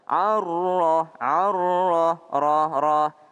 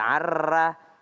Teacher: Ada huruf ro, kalau dia baris fathah maka dia tebal.